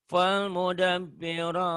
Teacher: Ro-nya dibaca tebal karena barisnya di atas.